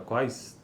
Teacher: e corresponde a uma oclusiva velar labializada. Nessas consoantes articulamos a oclusiva velar, k ou g, concomitantemente com o arredondamento dos lábios.